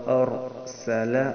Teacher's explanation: وارسل، اب ایک تو یہاں پہ را ہے، را ساکن، اس سے پہلے لفظ پہ زبر ہے، را کو پر پڑھیں گے، یعنی ایک دم را کو ڈھیلا نہیں چھوڑنا.